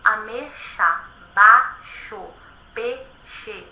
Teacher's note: Então nós temos a palavra ameixa, peixe, baixo, em que o X aparece depois dos ditongos, que são duas vogais que permanecem unidas na mesma sílaba. Na língua falada, muitas vezes as pessoas pronunciam ameixa, baixo, peixe, e nós não temos um ditongo. A não ser quando a pessoa quer dar muita ênfase, quando eu quero, por exemplo, dizer, por exemplo, que uma pessoa ela é muito baixa, então ela é baixa demais, aí o ditongo retorna. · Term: monotongação